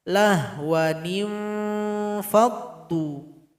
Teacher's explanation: itu Nun bertemu Va Irfandi aufat itu dengungan dengan sabarnya seimbang jadi posisinya bibir bawah berjumpa dengan gigi seri atas